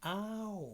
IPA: au